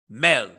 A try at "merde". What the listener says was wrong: No, not Mel, Meld with an R. You got to roll the R back. Meld. No, meld. MERDE. Meld.